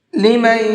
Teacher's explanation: یہاں پر غنہ کریں گے، اس لیے کہ یہاں پر نون ساکن کے بعد میں یا ہے، اور نون ساکن کے بعد یا ہوتا ہے تو وہاں پر غنہ کر کے پڑھتے ہیں۔